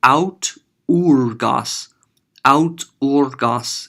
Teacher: au with a smooth breathing, means I'm not going to add an H sound to it, but rather keep it smooth